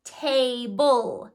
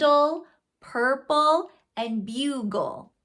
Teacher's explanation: when there is a consonant followed by an l e that is going to be its own syllable but you don't actually hear a vowel sound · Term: consonant l e